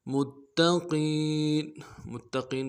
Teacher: لام کے اوپر بھی ہے اور تا کے اوپر بھی تشدید ہے، زور دینا ہے، قوف کو موٹا کرنا ہے اور یا مدہ کھینچنا ہے۔